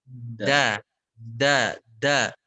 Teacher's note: Dan ada tekanan, da. Jadi makhraj huruf dal ini sangat bertumpu pada ujung lidah yang menekan ke langit-langit bagian depan itu ya.